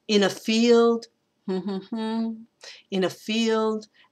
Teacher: We have what's called an anapest, which is two unstressed and a stressed.